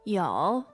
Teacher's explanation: The verb to have basically is 有 yo, third tone.